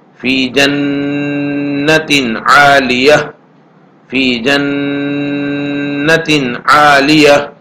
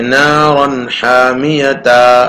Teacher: تو یہاں نارن حامیتن میں پہلے سے الف، پہلے سے یہاں پر بھی تا ہے، اخیر میں گول تا ہے، اور گول تا پر آیت کا طریقہ یہ بتایا ہے کہ ہائے ساکنہ بن جائے گی